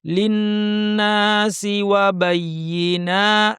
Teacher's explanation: নুনের পর আলিফ টানতে হবে।